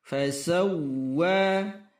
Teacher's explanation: Tetap terdengar suara huruf waw, w, tetapi hentakannya jelas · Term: tasydid huruf waw